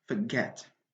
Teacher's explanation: We have two syllables in this word, and the stress is on the second syllable, get, forget, not the first one.